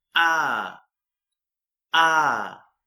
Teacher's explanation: in American says R and in British pronunciation we say ah